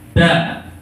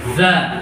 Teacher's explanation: kalau yang ada titiknya, za itu lidahnya ada di ujung